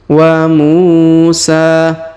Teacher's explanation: huruf mu kita panjangkan dua harakat karena di depannya terdapat wau sukun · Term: panjangkan 2 harokat